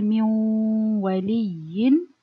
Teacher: I say min wali. So no noon anymore, but the ghunna of the noon still there. And you do it with the waw. · Idgham naqis means incomplete merging or incomplete idgham. You merge the noon sound, so no noon, the same like the idgham kamil, but its characteristic or the ghunna remains. And this is in two letters, the ya and waw. · The idgham here, it's incomplete and with ghunna. So the example here, when I say min waliyin, I merge the noon.